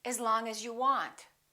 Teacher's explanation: The vowel in the preposition generally becomes the neutral sound